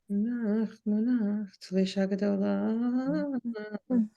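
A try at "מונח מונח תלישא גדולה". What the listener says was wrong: Right.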